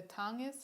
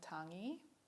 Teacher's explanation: in standard fijian an austronation language from fiji it's the final consonants that have been lost